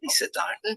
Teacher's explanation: My intonation is going up. Sounds completely different, but the words are exactly the same.